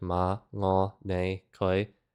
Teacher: this is just a low rising, like ma, ngo, ne, koi